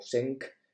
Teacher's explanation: se obtiene modificando la consonante final del radical, la T, cambiándola por una consonante velar